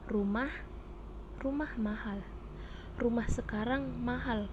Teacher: kalimat berita atau deklaratif ditandai dengan pola datar turun